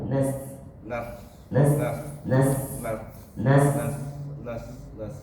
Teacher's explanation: biarin aja desisnya biar keluar jangan ditahan